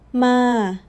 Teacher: Mid, flat and steady.